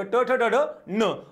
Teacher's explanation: जिभेचा स्पर्श मूर्धेला, कठोर टाळू आणि मृदू टाळू यांच्या मध्ये मूर्धा असते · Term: मूर्धन्य